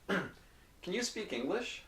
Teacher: the pronunciation is not can but it's it's very short very quick and it's not loud